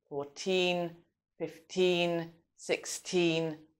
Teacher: the stress is on the second syllable. So in other words, on the teen part. So we say 14, 15, 16 and so on.